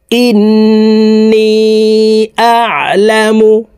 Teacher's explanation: এখানে আইনকে হলকের মধ্যখান থেকে চাপ দিয়ে উচ্চারণ করতে হবে, কারণ আইনের মখরাজ হলকের মধ্যখান থেকে হবে।